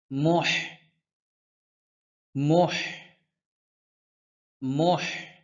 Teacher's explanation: কণ্ঠনালীর মধ্যখান থেকে উচ্চারণ হয়